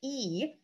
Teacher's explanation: And what these represent is where your tongue is in the mouth when you say these sounds. So when you say E, your tongue is very far forward and very high in your mouth